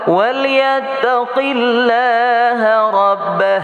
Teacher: Lafaz Allah dibaca tarqiq tipis.